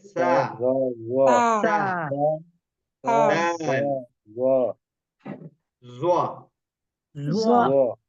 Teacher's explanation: یہ تینوں حروف زبان کی نوک کو اوپر کے سامنے والے دو دانتوں کے اندرونی کنارے سے لگا کر ادا ہوتے ہیں. فرق صرف اتنا ہے کہ سا اور زال کی آواز باریک ہوتی ہے اور زوا کی تھوڑی سی موٹی.